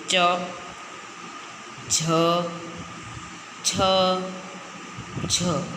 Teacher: તાલવ્ય એટલે એ અક્ષર બોલતા આપણી જીભ તાળવાને ચોંટે